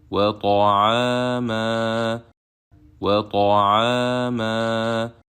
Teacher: When we stop at the end of the first word, because it ends with Tanween Fatha, we will exchange Tanween Fatha with Alif Mad 2 beats long